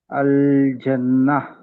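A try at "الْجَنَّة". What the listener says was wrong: Very good, explain చేయండి.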